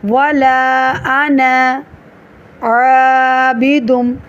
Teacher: آنا کے الف کو وقف اور وصل دونوں میں لمبا نہیں کرنا